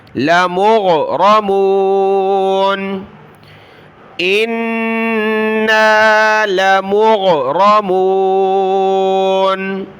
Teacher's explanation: غین کو گلے سے نکالیں